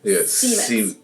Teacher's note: English speakers pronounce it with a voiceless S